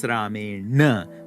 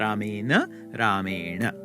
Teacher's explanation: where the n has now become the retroflex na